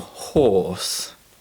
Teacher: in British English, we don't pronounce the r sound